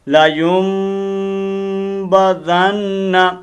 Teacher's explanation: یہ میم لے کر غنہ کیا جاتا ہے اقلاب کے ساتھ